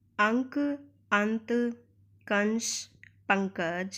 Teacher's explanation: अंक प्राप्त पंकज कि आदि में अनुस्वार का प्रयोग हुआ है इन के उच्चारण में हवा नाक से निकलती है · जैसे अंक, अंत, कंस, पंकज आदि में अनुस्वार का प्रयोग हुआ है। इनके उच्चारण में हवा नाक से निकलती है। अनुस्वार एक नासिकीय ध्वनि है। इसका उच्चारण करते समय हवा केवल नाक से निकलती है, अर्थात अगर हम इनको बोलते समय अपनी नाक बंद कर लें तो इन ध्वनियों का हम सही उच्चारण नहीं कर पाएंगे।